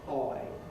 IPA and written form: hɒɪ (high)